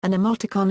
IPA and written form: ɨˈmoʊtɨkɒn (emoticon)